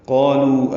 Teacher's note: قالوا الف مدہ اور لو واو مدہ ہیں، دو حرکات لمبے کریں گے ، قاف بھی پر الف بھی پر، لام باریک واو مدہ